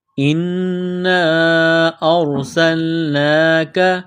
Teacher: نون مشدد ہے غنہ کریں گے آواز ناک میں چھپائیں گے